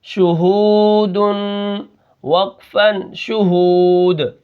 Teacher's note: ٹھیک ہے، اب یہاں پر دیکھیں شین پیشو، اس کو نہیں کھینچنا، ہا واو پیش ہو، اس کو ہم کھینچ رہے ہیں کیونکہ واو ساکن ہے، اس سے پہلے پیش ہے، تو یہ واو مدہ ہو گیا۔